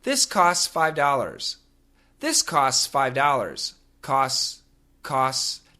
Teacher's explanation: When we say costs, actually, the faster we say it, we can cancel the T sound. So this costs $5 can sound like this costs $5.